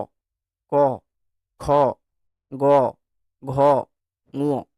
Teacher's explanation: জিভটারও কোনো একটা অংশ ওইখানে স্পর্শ হবে। দেখো একদম জিভের ভিতর দিকটা উপরের ওই তালুটাতে স্পর্শ হচ্ছে হালকা হলেও।